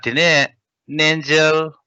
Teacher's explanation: we nasalize nangel, not like najal